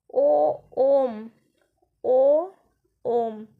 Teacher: प्लुत स्वर जिसमें तीन मात्रा का समय लग उच्चारण में